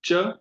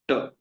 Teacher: एक बार जीभ आगे आ रही है च उच्चारण करने के लिए, और एक बार जीभ पीछे जा रही है ट उच्चारण करने के लिए। तो ये हुई तालु और मुर्दा।